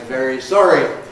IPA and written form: ˈveɹi ˈsɒɹi (very sorry)